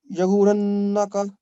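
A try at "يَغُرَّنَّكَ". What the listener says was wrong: یاو رن نہیں، پہلے گر پھر رن. گر رن کا یا گر رن کا.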